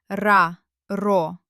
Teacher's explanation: When we spoke the hard R, the very tip of our tongue vibrated behind the upper teeth.